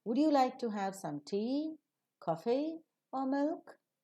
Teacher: For all the alternatives that you are providing, excepting the last, they receive the rising tone, and the last alternative that you are providing will receive the falling tone.